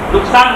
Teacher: જીભ વાળી નહીં બોલવાનું. નુકસાન બોલવાનું. સસલાનું સ બોલવાનું.